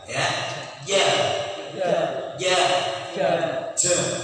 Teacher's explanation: Yang ada tempatnya jim adalah punggung lidah.